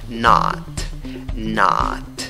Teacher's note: La escritura es con O, pero la pronunciación es con la A, que tiene 2 puntos. La A gruesa.